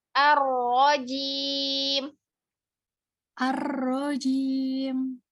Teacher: Tebalkan ro-nya. Angkat pangkal lidahnya.